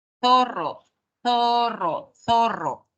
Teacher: sonido interdental El de acá suena suena así zorro zorro zorro la lengua entre los dientes